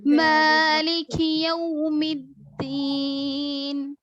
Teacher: مجھول آواز سے بچائیں گے. یو نہیں پڑھیں گے، یو پوری وو کی آواز ظاہر ہو